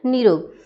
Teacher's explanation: यदि विसर्ग के बाद र हो तो विसर्ग लुप्त हो जाता है और विसर्ग के पहले का स्वर दीर्घ हो जाता है। जैसे यहाँ पे विसर्ग है और उसके बाद रा है तो विसर्ग के पहले का स्वर जो है वो दीर्घ हो जाएगा।